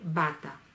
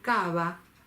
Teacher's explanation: ahí no va haber perdido el rasgo de la oclusión y se va a transformar en una fricativa o aproximante porque yo no hago un cierre total